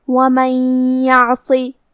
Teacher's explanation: کلمت من کے آخر میں نون ساکن ہے، پھر حرف الیا ہے کلمت یعصی. یا حروف الادغام بغنہ میں سے ہے تو ہمیں یہ حکم کو غنہ اور تشدید کے ساتھ ادا کرنا ہے